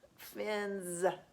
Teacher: it's an S at the end and it sounds like a Z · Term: Z sound